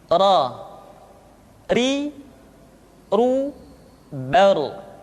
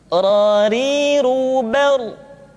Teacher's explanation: Diucapkan dengan menyentuhkan punggung lidah dengan langit-langit. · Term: huruf ra